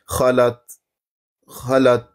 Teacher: बिल्कुल छोटी सी आवाज़ आखिर में आती है ता साकिन की। खलत, खलत, ये जो आखिर में ये आवाज़ है ता साकिन की।